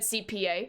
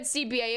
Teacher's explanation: the P and the B sound are very, very similar sounds. Both bilabial sounds.